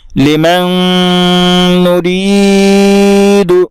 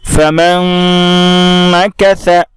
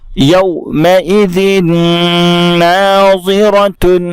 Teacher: غنہ کے ساتھ ادغام ہوگا، یعنی ناک میں تھوڑی دیر آواز روک کر کے پڑھیں گے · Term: ادغام مع الغنہ